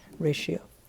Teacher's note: a common pattern that we have in english for pronunciation tio the t sounds like an sh